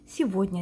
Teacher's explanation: Мысалы үшін, сегодня деп жазамыз. Г әрпі Е мен О әріптерінің ортасында тұр. Сондықтан да ол В деп оқылады. Яғни, сегодня деп айтамыз. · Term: В дыбысын